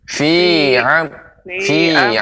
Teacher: Kalau fi jangan terlalu panjang pengucapannya, cukup ditekan fi amadin.